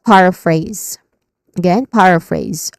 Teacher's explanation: it ends with phrase, which has a diphthong in the middle, A, and then a buzzing sound at the end, or letter Z sound. So this is paraphrase.